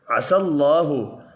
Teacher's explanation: اللہ کا نام برعلام زبر کی وجہ سے پر پڑھا جائے گا